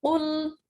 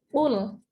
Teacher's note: qul huruf qaf itu harus tebal ya, karena huruf qalqalah. Qul, jangan kul ya, jangan kul, tapi qul harus dalam sini.